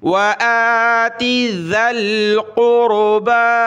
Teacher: ذال پر زبان نکالنی ہے اور ذال کو ہم نے آگے لام کے ساتھ ملانا ہے۔ ذال لام زبر ذل، قاف را پیش قور، با کھڑا زبر با، قربا۔